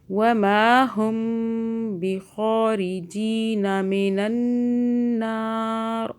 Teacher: میم ساکن کے بعد جب بھی با آئے گا ہم میم پر غنہ کریں گے